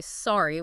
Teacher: with a falling pitch, I sound like I'm apologizing for bumping into your car.